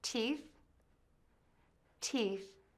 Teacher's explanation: Start by saying the T sound by touching the tip of your tongue to the back of your top front teeth. Add the long E made by smiling and make the sound long.